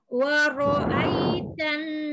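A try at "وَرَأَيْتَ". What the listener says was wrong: Ah, jangan ai, jangan diangkat. Wa ro'aitan karena ya sukun sebelumnya fathah itu adalah lin, maka dia lembut saja. Jangan ditekan-tekan ya.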